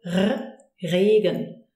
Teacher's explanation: When I say Regen, it doesn't always come out in the same way. Sometimes the R comes in a nice kind of almost rolled way.